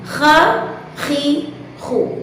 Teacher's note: Untuk mendapatkan atau untuk melafalkan huruf kha dengan cara-cara yang telah disebutkan seperti tadi, dengan suara yang mengalir, dengan nafas yang keluar, dan dengan suara yang ditebalkan, serta hingga merasakan beratnya huruf kha dilafazkan.